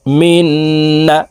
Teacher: মাঝখানে জজমওয়ালা নুন বাদ পড়ে যাবে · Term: ইদগামে বা গুন্নার